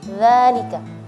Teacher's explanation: bukan za tapi dza lidahnya dikeluarin sedikit ya